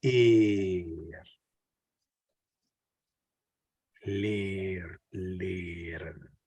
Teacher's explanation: when it is followed by the consonant R, the A is pronounced more like E. It's basically the same sound as ik, except you prolong the sound.